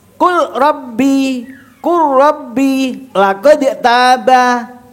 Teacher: Ya, lam dengan ro berdekatan, sifatnya sama, berbeda makhrajnya tapi berdekatan. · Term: idgham